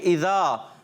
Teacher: اذا جو ہے عرف مدہ ایک الف کھینچ کے جائیں گے